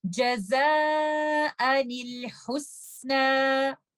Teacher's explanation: इन दोनों लफ्जों में meeting of to साकिन लेटर्स या इत्तका साकिनैन का रूल हम अप्लाई कर रहे हैं। तो नून जो छुपा हुआ है तनवीन में उसके नीचे हम कसरा डालेंगे और उसको लेटर लाम से मिला देंगे